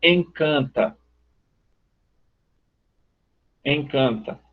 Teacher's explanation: E aí, como a gente tem uma série de vogais nasais, mesmo essa sílaba, esse arquifonema N, vai nasalizar a vogal, mas ele também serve para o travamento da sílaba, se ela for penúltima, tipo a palavra encanta.